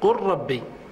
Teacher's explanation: لا بد من قلب أحد الحرفين ليكون مماثلا للآخر، لأننا قلنا إن الادغام لا يحدث إلا بين متماثلين، حتى لو كان بين متقاربين كاللام والراء قل ربي لا يحدث الادغام حتى تقلب اللام راء ثم تدغم